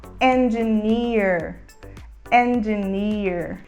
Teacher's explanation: E a gente fala com E aberto